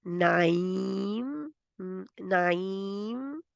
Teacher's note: जो आखिर वाला है होंठ वो बंद होने चाहिए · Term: मीम